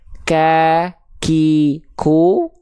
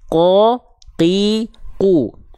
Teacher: huruf qaf dia kebalikan dari kaf, dia nggak mengalirkan nafas. Dia sifatnya jahar, tidak mengalirkan sedikit pun nafas.